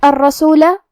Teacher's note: یہاں را پہ تشدید ہے تو ہم 2 حرف کے برابر حرف الرا کو پڑھیں گے. آخری میں لام پہ زبر ہے لہذا اس کا دھیان رہے.